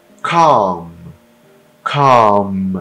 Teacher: eu tenho um l aqui mas eu não pronuncio ele inteiramente ele é só um detalhezinho